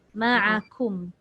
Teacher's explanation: Cuma kaf ni kalau kita tak berhati-hati menyebut baris depan takut dia jadi tebal. Ma'akum. Dia nipis je, dia ringan.